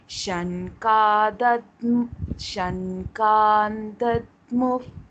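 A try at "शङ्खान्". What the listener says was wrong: Shankhan. Kha can be said with more force. The second kha, no? Kha, kha.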